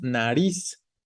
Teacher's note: Nariz, no, no decimos nariz, ¿no? Decimos nariz. La fuerza está en la última. En la palabra nariz es más bien aguda.